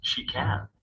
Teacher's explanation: it is pronounced with a clear vowel at the end of a clause such as yes she can